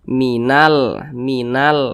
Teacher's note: merah seharus harusnya huruf nun dibaca panjang Seharusnya kan akan tetapi huruf nun dibaca pendek Karena di depannya ada huruf yang disukunkan